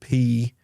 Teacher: when we say the word P, there's a burst of air that is released from our mouth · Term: plosives